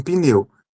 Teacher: Ainda que seja um p, na pronúncia sai um i